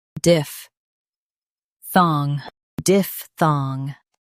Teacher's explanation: Stress diph and keep thong clear.